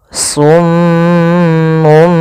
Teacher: ada bacaan gunnah pada huruf mim yang berharakat tasydid